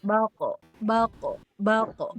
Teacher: jangan ditarik si bibirnya teh jangan ditarik kayak tipis bak tapi bal kayak bulat gitu. Bulat tapi dibuka baqo. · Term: tafkhim